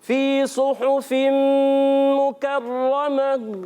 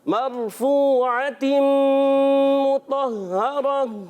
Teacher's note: وقف کی صورت میں یہاں گول تا ہا سے بدل جاتی ہے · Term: وقف الابدال مال ہا